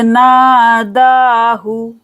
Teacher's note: नादा को खींचेंगे, हु को जल्दी से पढ़ेंगे